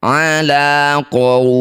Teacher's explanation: Panjangkan waw sukun ini 6 harokat, baca dengan lembut. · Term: madlin